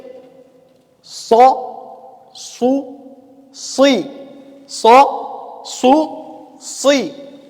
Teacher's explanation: تخرج من طرف اللسان مع ما فوق الثنايا السفلى